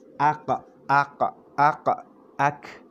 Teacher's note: Huruf qaf kita akan dapati dia berada lebih belakang berbanding dengan huruf kaf. Okey, kaf di sini ka, ak.